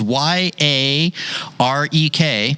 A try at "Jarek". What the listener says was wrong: Very close. The first letter is actually J. It's a silent J. I would say so, yeah.